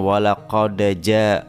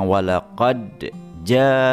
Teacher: jelas dalnya qalqalah sughranya hilang menjadi berharakat fathah